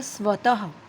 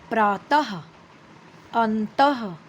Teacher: यह जो दो बिंदी है जिसे हम विसर्ग कहते हैं यह ह के रूप में आवाज निकालती है। आहा उच्चारण में अंतर ना होने पर भी दोनों में देखो ह में और ह में कोई अंतर नहीं है।